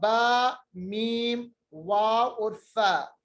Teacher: ये 4 हरूफ हमारे होंठों से अदा होते हैं